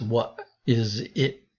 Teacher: the t sound as in tag often is at the end of the word turned into a glottal stop